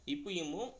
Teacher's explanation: மேல் இதலோட கீழ் இதலும் பொருந்துவதுனால வருது